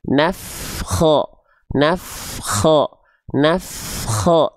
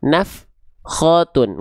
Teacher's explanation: pastikan ketika melafalkan huruf fa di sini teman-teman terus mengalir · antara af dengan kho itu enggak boleh ada jedah